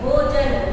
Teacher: न में अ की ध्वनि सुनाई दे रही है